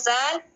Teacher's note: زال کو سا کی طرح زبان کے اس برابر اوپر کے دو دانتوں کے کنارے سے لگا کر پڑھتے ہیں